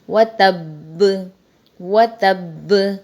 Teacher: تو تشدید کا جماؤ ہم نے باقی رکھا اور ہم نے یہاں پر ساکن کیا، یعنی باقی حرکت حذف ہو گئی اور وقف بنا وقف بالاسکان.